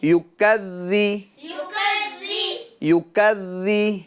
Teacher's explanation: ذال میں شدت نہیں ہو یعنی سختی نہ ہو نرمی کے ساتھ ادا کرنا ہے